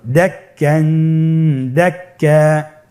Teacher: গুণনা সবসময় এক আলিফ টেনে পড়তে হবে, বেশি করা যাবে না, আবার কমও করা যাবে না